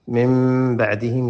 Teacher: یہاں پہ اقلاب ہے، میم کی آواز پڑھیں گے، نون نہیں پڑھیں گے